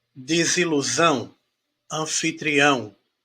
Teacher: o ão vai acabar sendo a minha sílaba mais forte